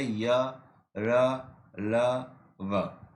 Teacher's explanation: इनका उच्चारण करते समय जीभ मुख के किसी भी अंग का स्पर्श नहीं करती है। जो अंतस्थ व्यंजन होते हैं, जब हम उनका उच्चारण करते हैं तो हमारी जीभ मुख के अंदर कहीं भी नहीं लगती।